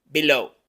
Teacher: el diptongo o lleva una o como del español pero luego una u chiquita No es ou es ou ou esa u final es más